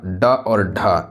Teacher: ये आपका मूर्धा से बोली जाने वाली व्यंजन है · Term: मूर्धन्य व्यंजन